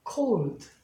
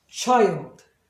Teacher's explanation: 여기서는 마치 반모음처럼 반응을 해요. 그러니까 원칙은 뒤에 LD가 있으면 당연히 둘 중에 하나는 생략을 해야 되는데 D가 생략이 되거든요. 자음 생략에 의해서.